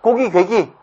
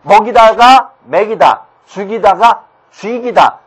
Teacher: 발음이 앞쪽으로 나가려는 듯한 느낌이 들죠? 전부 다 이모음 역행동화입니다.